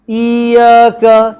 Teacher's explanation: Dia tak syaddahkan ya. Dia panjangkan i.